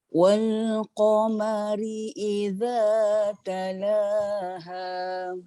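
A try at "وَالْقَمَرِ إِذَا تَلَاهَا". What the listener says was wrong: La tu nampak naik. Iza dah turun dah. Rendahlah maksudnya. Iza talaha. Iza talaha.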